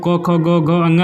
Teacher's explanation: क वर्ग का उच्चारण स्थान कंठ है